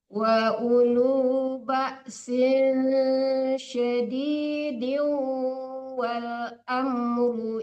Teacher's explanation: Wa ulu ba'sin disamarkan ke shin ya, dengung ya.